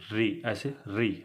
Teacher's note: मूर्धा से री, देखिए जब हम री बोलते हैं तो हमारा जो जीभ है मुड़ जाता है, री ऐसे मुड़ जाता है।